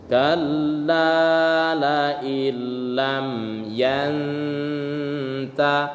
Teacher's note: Nun mati bertemu dengan huruf ta dihukum gunnah